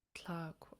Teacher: So it's a long high A and then KW.